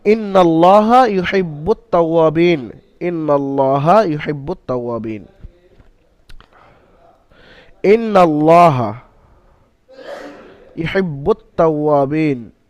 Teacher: নুনের উপরে মুসাদ্দাদ ওয়াজিব গুন্না, একালিফ পরিমাণ নুনকে গুন্না করে পড়তে হবে, আর নুনের উপরে জাবার হওয়ার কারণে হারাকাত আসার কারণে নুন তাড়াতাড়ি পড়তে হবে, টান্দা নিষেধ।